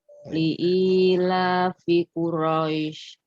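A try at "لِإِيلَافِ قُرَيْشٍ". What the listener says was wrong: Dipanjangin tante. Dipanjangkan 4 harokat. Ya, seharusnya dia 4 harokat. Li'ilafi Quraisy. Panjang.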